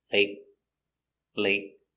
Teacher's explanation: Late. The T after a vowel is a stop T. You stop the air. You put your tongue up and stop.